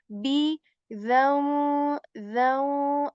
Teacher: just the B sound with joining both lips uh together